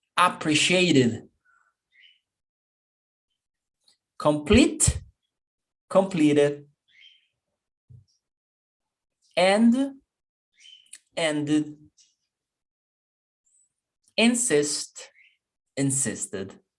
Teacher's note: In past tense, we pronounce it with the syllable id.